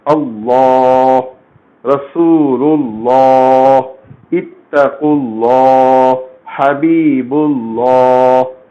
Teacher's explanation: لام اسم جلالہ سے پہلے کے حرف کو زبر ہے یا پیش ہے، فتحہ ہے یا ضمہ ہے، تو آپ ایسے لام اسم جلالہ کو پر پڑھیں گے، موٹا پڑھیں گے